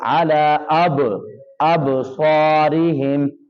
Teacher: با کے اوپر قلقلہ کرنا ہے، آواز کو ہلانا ہے